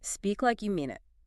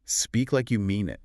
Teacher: The stress falls really heavily on the word mean.